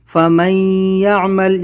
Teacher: نون ساکن کے بعد یا ادغام یا ہوگا اور یہاں پر غنہ کریں گے